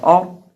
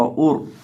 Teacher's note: را ساکن ما قبل زبر ہوگی تو موٹا کریں گے، اسی طرح را ساکن ما قبل پیش ہوگی تو تب بھی موٹا کریں گے